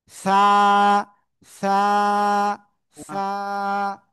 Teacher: এই যে অক্ষরটা, জিহ্বার আগা উপরে দুই দাঁতের আগায় লাগান, লাগান সবাই লাগান, লাগান, লাগান, এই যে এভাবে লাগিয়ে হালকা বাতাস বের করতে হবে সামনের দিকে, হ্যাঁ, বের করে একালিপ টেনে উচ্চারণ করতে হবে, সা, সা, সা।